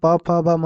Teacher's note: ओष्ठ जहां प म होता है। दोनों ओठों के मिलाने से होता है।